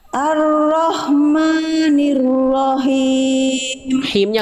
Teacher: sekali lagi arrahmanirahimnya kurang bund ha kecil kayak tadi yang awal ha kecil dilafalkan dari tengah tenggorokan berbisik I lagi